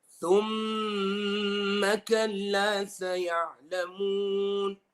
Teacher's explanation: on the ghunna, the sound is going through my khayshum only